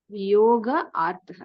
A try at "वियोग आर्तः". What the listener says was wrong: वियोग आर्तः there is no visarga Okay, so there is only savarna dirgha, no special sandhis here.